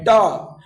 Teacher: ट का उच्चारण किससे होता है? मूर्धन्य से होता है, जिसे कहते हैं मूर्धा।